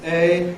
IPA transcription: eɪ